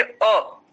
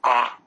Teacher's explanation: ह्रस्व आकार की अ और दीर्घ आकार की आ, पूरा बड़ा मुंह। जैसे रसगुल्ला खाते हैं ना, तो रसगुल्ला खाने के लिए हमें क्या करना पड़ता है, पूरा मुंह खोलना पड़ता है।